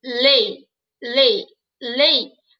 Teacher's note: Ele vai ser a vogal, então, e não o I. O I vai ser a semivogal.